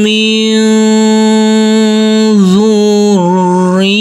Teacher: Huruf nun yang bersukun ini bertemu dengan huruf dzal, maka huruf nunnya kita samar-samarkan. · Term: bacaan ikhfa